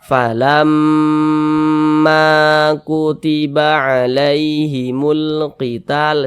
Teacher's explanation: ma dibaca panjang karena dia mad tabi'i. Falamma kutiba alaihimul qital, seperti itu. · Sehingganya ma dibaca panjang. lamnya dibaca panjang, lam panjangkan tadi didengungkan karena gunnah, ma dibaca panjang karena dia mad tabi'i